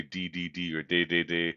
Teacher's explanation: You can feel that your tongue is right behind your teeth. There's a little bump behind your teeth, and that's where your tongue touches. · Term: The D in English